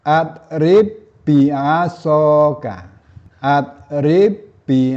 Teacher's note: Seperti juga huruf qo dan da pada huruf ba ini kalau normalnya kalau sukun itu dipantulkan. Namun pada idgham mutamasilain ini huruf ba sukun tidak dipantulkan sehingga dibacanya atrib biasok.